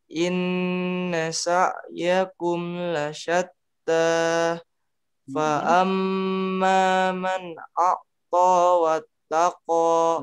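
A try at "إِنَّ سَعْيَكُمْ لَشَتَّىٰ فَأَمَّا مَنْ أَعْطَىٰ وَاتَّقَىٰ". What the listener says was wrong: Nah, jangan a. Lihat saya mulutnya ke samping. A, senyum. A. Inna sa'yakum lasyatta.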